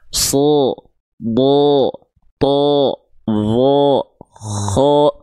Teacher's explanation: huruf-huruf yang ketika berharokat fathah dia terdengar seperti vokal O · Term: tebal